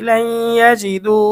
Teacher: ঈদগামে বাগুন্না, নুন সাকিন ও তানভিনের পরে ঈদগামে বাগুন্নার 4 হরফের কোনো একটি হরফ আসিলে তখন ওই নুন সাকিন বা তানভিনকে গুন্নাহের সহিত মিলিয়ে পড়িতে হয়। নুন সাকিনের পরে ঈদগামে বাগুন্নার হরফ ইয়া এসেছে, আমরা গুন্না সহ মিলিয়ে পড়ব।